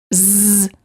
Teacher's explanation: you should feel a vibration in your vocal cords this is how you know that the z sound is voiced